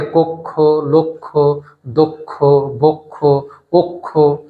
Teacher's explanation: কখন ও হয় তার একটি নিয়ম, যে অ এর পরে যদি কয় স থাকে তাহলে সেই অটা ও হয়ে যায়। · কক্ষ, কয় স আছে, তাহলে ক নয়, সেটাকে আমরা উচ্চারণ করব কো, কয়ের সঙ্গে যে অ ছিল সেটাকে আমরা ও বানিয়ে দেব, উচ্চারণটি হয়ে যাবে কক্ষ